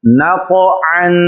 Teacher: قاف یہ بھی حروف قلقلہ میں سے ہے اور اس لیے اس کو ظاہر کر کے پڑھا جا رہا ہے